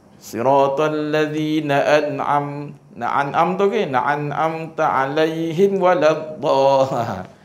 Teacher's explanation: dia telah menggugurkan satu sifat gunah pada mim